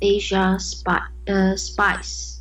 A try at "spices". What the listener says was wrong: Spices. So, do not forget to always read the last syllable. So it's spices.